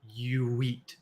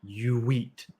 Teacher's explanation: we have another vowel vowel link you so i have my mouth rounded you eat